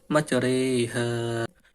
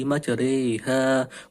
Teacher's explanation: Yang ketiga yaitu imalah, condong, yaitu membaca antara harokat fathah dan kasroh